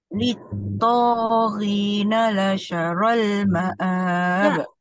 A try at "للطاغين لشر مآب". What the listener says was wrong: Mana ada alif lam؟ Macam mana boleh jadi la syarrul؟ لِلطَّاغِينَ لَشَرَّ مَآبٍ.